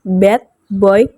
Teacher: Pelafalan fonetiknya bilabial voiced stop, bergetar saat diucapkan, ada getaran di tenggorokan juga. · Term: bunyi beh